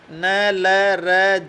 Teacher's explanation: वर्तस्य व्यंजनों के उच्चारण में जीवा वर्तस्य अथवा ऊपरी दांतों के मसूड़ों को स्पर्श करती है, छूती है। वर्तस्य व्यंजन है न, ल, र, ज भी वर्तस्य व्यंजन है।